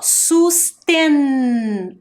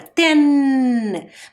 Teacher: vogal e em seguida eu preciso deste som olha só susten olha a posição da minha língua ten bateu lá no céu da boca quer dizer que eu preciso colocar a letra N sustent tá